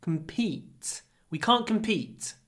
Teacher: Don't say com. Compete. Because the stress is on E.